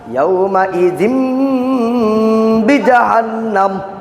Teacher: নুন সাকিন বা তানবিনের পরে অন্য শব্দত বা আসিলে মিম দ্বারা বদলাইয়া ইখফা করিয়া পড়িতে হয়। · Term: কলব